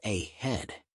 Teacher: in the word ahead, head is the stressed syllable and the at the beginning is unstressed a head.